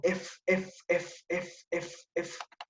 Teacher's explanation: el modo de articulación se caracteriza por ser fricativa, fricativa. Muy bien, porque el aire es emitido de forma parcial